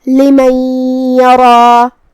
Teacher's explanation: ہم یہ نون کو یا میں ملا کے غنہ اور تشدید کے ساتھ یہ حکم کو ادا کریں گے